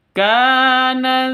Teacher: panjang dua ketukan karena ada Alif diawali dengan fathah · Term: Mad thi'i